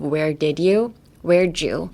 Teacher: Even though there is no J in this phrase, I would still say pronounce it as a J